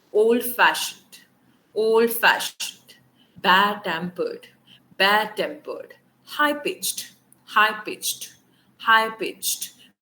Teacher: Stress is on the second component। Old-fashioned, old-fashioned, bad-tempered, bad-tempered, high-pitched, high-pitched, high-pitched, right?